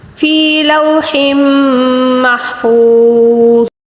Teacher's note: فوز، یہاں پر یہاں پر واو مدہ ہے، اور آخر کے لفظ کے نیچے 2 زیر ہے، اس کو وقف کے دوران ہم ساکن کے ساتھ تبدیل کر کے جب پڑھیں گے تو واو مدہ کو ہم 3 الف کے برابر کھینچ کر پڑھیں گے